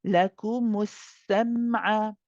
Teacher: Mim tawassut means that you are not cutting it too short, you're not bouncing it, and you're not letting it run.